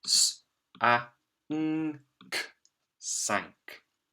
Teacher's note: you can hear that this N by itself is making the ng sound